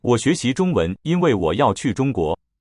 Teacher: 因为 sounds like two high tones.